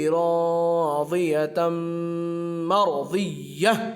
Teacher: दो ज़बर की तनवीन के बाद या वाव मीम नून में से मीम है इसलिए इदगाम माअल गुन्ना होगा, यहाँ पर आवाज़ को नाक में ले जाएंगे। राज़ियतम, रा साकिन से पहले ज़बर है इसलिए रा पुर होगी।